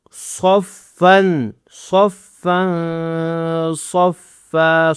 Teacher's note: صاد کو موٹا کرنا ہے, فا پر غنہ کرنا ہے